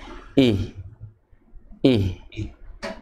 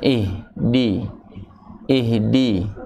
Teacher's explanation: Nah itu rahangnya turun namun lidah bagian tengah naik